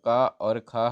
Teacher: का और ख हमारी कंठ ध्वनि हो जाएंगी